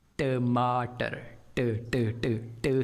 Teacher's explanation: तो इंग्लिश का ये जो साउंड है ये एक अनवॉइस्ड साउंड है, यानी कि वोकल कॉर्ड्स वाइब्रेट नहीं होने चाहिए। लेकिन जो साउंड हम इसके लिए इस्तेमाल कर रहे हैं वो ट साउंड एक वॉइस्ड साउंड है